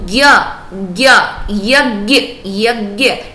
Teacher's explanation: हमें सुनाई दे रहा है, ज सुनाई दे रहा है, या सुनाई दे रहा है और अ सुनाई दे रहा है